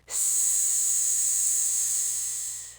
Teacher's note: Now, make a long S sound, like a snake. S You shouldn't feel any vibration on your hand. Your throat's completely still. The sound's being made entirely by the air pushing past your teeth, that means s is an unvoiced consonant.